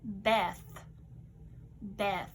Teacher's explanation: The TH is soft in Beth. We hear you're just pushing air out on the soft sound. You can't hear it in your throat.